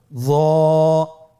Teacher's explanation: জিহ্বার আগা, সামনের উপরের 2 দাঁতের আগার সঙ্গে লাগিয়ে উচ্চারিত।